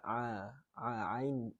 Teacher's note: Dan kesilapan yang biasa dilakukan pada ayat yang kedua ini ialah huruf ain. Ain ni sama tempat keluar dengan ha di pertengahan halkum kita.